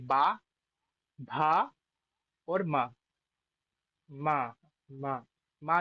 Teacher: जब आप पा बोलेंगे तब आपके होठ खुल रहे होंगे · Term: प वर्ग